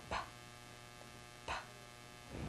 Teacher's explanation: in front of your mouth and see if you feel anything hopefully you were able to feel a burst of air coming out of your mouth as your lips popped open lips start closed and pop open and for that very reason